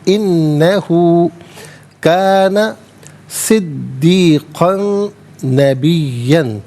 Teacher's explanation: کاف پر دو زبر کی تنوین ہے، تنوین کو نبیہ کی نون کے ساتھ ملا کر نون کی آواز کو غنّے کے ساتھ ادا کیا جائے گا. یہاں پر یرملون کا قاعدہ اپلائی ہوگا. · صدیقاً میں دال مشدد ہے، جماؤ کے ساتھ پڑھا جائے گا. کاف پر دو زبر کی تنوین ہے، تنوین کو نبیہ کی نون کے ساتھ ملا کر نون کی آواز کو غنّے کے ساتھ ادا کیا جائے گا.